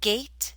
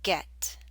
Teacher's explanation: the a in gate is longer